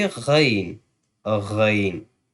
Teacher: Ain is from the middle throat because Ha and Ain both are soft letters and we will pronounce from the middle throat, and Ghain will be from the upper throat, from the upper side of the throat, the throat near to the mouth